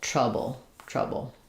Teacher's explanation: it's got a syllabic L, which basically means there's no vowel or just a little bit of an or sound before it. The L functions as a full syllable, like vowel and consonant together. · The L functions as a full syllable, like vowel and consonant together. So first syllable stress, we have the tr, the stress schwa, and then the bull